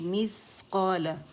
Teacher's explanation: اس میں ہمس اسے کہتے ہیں. اور جب ہمیں کہیں گے مثقال تو اس کی خوبی ہمس کی واضح ہوگی